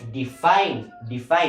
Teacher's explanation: So, asa dapat ang stress? Ang stress na yan nasa ikaduha nga syllable. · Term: stress syllable